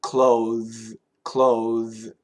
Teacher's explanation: The TH is actually a vibrated TH.